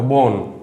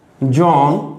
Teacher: ইংরেজিতে মনোসিলেবল যেটা বলে, মনোসিলেবল। এই একাক্ষর বিশিষ্ট শব্দের শেষে যদি দন্তন্য থাকে তাহলে তার উচ্চারণ ওকারান্ত হয়।